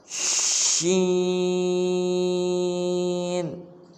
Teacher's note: زبان کا بیچ جب اوپر کے تالو سے لگے، جیسے آپ سکرین پر بھی دیکھ رہے ہیں شین۔